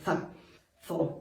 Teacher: vuelve a aparecer la Z española, por así decirlo, ¿no? Ese sonido za, ese sonido dental, za, zo, por ejemplo.